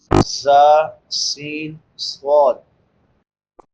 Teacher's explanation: 3 حروف جو سیٹی کے ساتھ ادا ہوتے ہیں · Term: سیٹی والے حروف